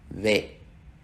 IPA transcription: β